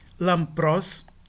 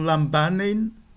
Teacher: Antes de labial, tende-se a pronunciar a nasal labial representada pela letra mu.